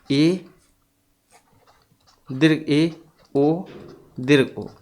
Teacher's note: तो जैसे कि संवृत की अगर हम बात करें तो मुख द्वार के संकुचित होने पर जो स्वर निकलेंगे उनको हम संवृत कहेंगे